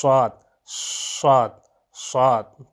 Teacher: یہ صفت جو ہے 3 حروف میں پائی جاتی ہے، صاد، زا اور سین۔ تو جب بھی آپ صاد ادا کریں تو اس وقت سٹی کی آواز آنی چاہیے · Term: صفت صفیر